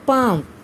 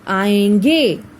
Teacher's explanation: नाक से भी और मुख से भी। मुख से भी ध्वनि निकलेगी और नाक से भी ध्वनि निकलेगी, तो इसे कहा जाता है अनुनासिक